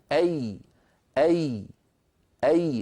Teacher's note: لاحظتم كيف أن وسط اللسان يرتفع؟ كذلك الأمر عندما ننطق حرفا مكسورا: بي قي سي شي خي، كل هذه الحروف لما نطقتها ارتفع وسط اللسان وانخفض الفك السفلي قليلا. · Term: الياء